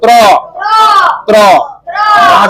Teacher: यह जीभ जो है मुर्धा और दांत दोनों के पास जाकर के बोलेगा त्र